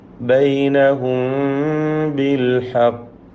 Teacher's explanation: ബൈനഹും എന്ന ആ സാക്കിന മീമിനെ ഇഖ്ഫ ഷഫവി നൽകി. ബാഇന് മുമ്പിൽ വന്നതിനാൽ മറച്ചു മണിച്ചുകൊണ്ട് ഉച്ചരിക്കണം.